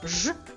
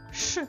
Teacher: Звук ж приголосний дзвінкий, а звук ш приголосний глухий